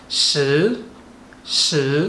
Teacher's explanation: ang last ng number 10 tinatawag itong sh sh pataas second tone